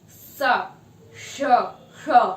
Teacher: बहुत ही घर्षण के साथ वायु निकलती है, एक संकीर्ण मार्ग से होते हुए निकलती है। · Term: संघर्षी